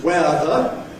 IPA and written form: ˈweəðə (weather)